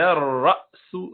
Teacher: را کے بعد حمزہ ہے، جھٹکے سے پڑھیں گے